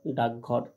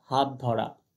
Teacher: চলো পরের নিয়মে, পরপদের প্রথম বর্ণ শেষ বর্ণ হলে, পরপদের প্রথম বর্ণ শেষ বর্ণ হলে পূর্বপদের শেষ অঘোষ বর্ণটির স্থানে ঘোষ হয়